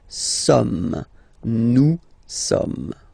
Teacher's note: So you don't pronounce the final S here. It doesn't exist.